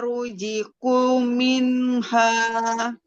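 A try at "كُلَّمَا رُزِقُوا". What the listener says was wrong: Kunya panjang.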